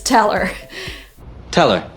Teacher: So we don't even have two words here. We don't have tell and we don't have her. We have one word that is tell her.